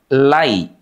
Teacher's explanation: Yang kedelapan, perhatikan kalimat alaihim. Ada huruf lin di sini teman-teman, lai. Dalam bahasa Indonesia disebut dengan vokal diftong. Lai. Bunyinya, ya mati itu identik dengan bunyi i.